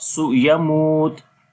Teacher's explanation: Yamut, so waw madda is coming. So waw is coming with sukun sign, and there is dhamma on the before letter, we long here, and then we stop